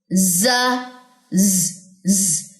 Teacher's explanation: vibration है इसमें सीटी है